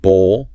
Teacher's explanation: Long O sound, dark L at the end.